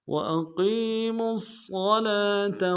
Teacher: میم کو صاد کے ساتھ ملانا ہے، صاد کو موٹا ادا کریں گے، صاد کے اوپر تشدید زور دیں گے